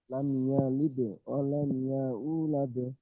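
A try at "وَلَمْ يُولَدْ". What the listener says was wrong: ওয়ালাম ইয়া ইউলাদ বলছেন, ওয়ালাম ইউলাদ। ওয়ালাম ইয়া ও পেশ ইউ, ইয়া ইউ হবে না, ইউলাদ। ওয়ালাম ইয়া ইউ বলছেন, ইয়া ইউ হবে না, ওয়ালাম ইউ। এখানে ইয়া আছে, আবার ইয়া নেই। ও মাদ্দা, ওয়ালাম ইউলাদ।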